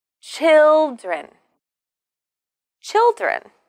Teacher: we need to stress the first syllable